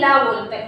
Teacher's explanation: ला किससे बोला जाता है? दंतमूल से और मसूड़ा से। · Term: वर्तस्य व्यंजन